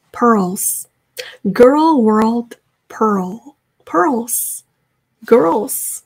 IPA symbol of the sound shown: ərl